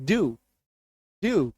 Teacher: क्या होता है डू होता है डू के जैसा साउंड आएगा सिर्फ और सिर्फ डू नहीं बोलना है आपको डू बोलना है और य का हल्का सा झलक आएगा